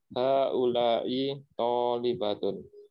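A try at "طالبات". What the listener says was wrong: Baknya yang panjang ya. Baknya itu dipanjangkan. Tolibatun. Nah, antum tadi masih tolibatun gitu. Baknya masih pendek.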